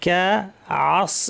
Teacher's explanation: এখানে আইন সাথে সদ আছে, ভারী করতে হবে সদটা, আইন যেন ভারী না হয়।